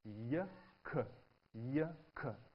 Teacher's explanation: So y is produced slightly further to the front at the palate.